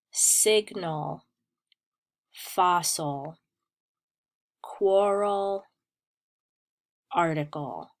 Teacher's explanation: the L overpowers the vowel that it's standing next to in the word. So you don't hear the vowel. What you hear is the stress on the ul sound. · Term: final schwa plus ul sound